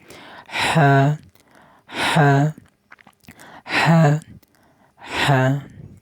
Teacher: এটা হলকের মধ্যখানে একটু চাপ দিয়ে হা হা হা হা।